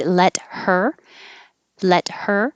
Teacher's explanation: i can get rid of the h · you connect the consonant t over to the e and now the t is between